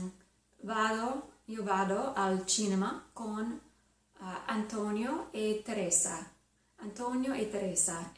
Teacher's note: it's a very soft non-aspirated tea in there